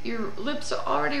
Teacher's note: Ha, hi, hu, hu, hu. Your lips are already rounded for U when you express that H, hu, and it's sort of in between an H and an F. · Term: rounded H